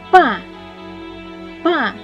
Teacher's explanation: це звук п бо наші губи щільно зімкнені звук п ми позначимо однією смужкою який другий звук ми вимовляємо